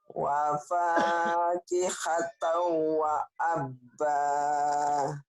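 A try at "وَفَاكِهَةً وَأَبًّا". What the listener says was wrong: Jangan wa abah, Bu. Wa abah mah kalau orang Sunda abah mah kakek-kakek abah. Wa abba, wa abba.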